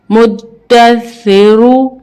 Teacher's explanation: अब रॉ को पुर पढ़ेंगे क्योंकि रॉ के ऊपर पेश है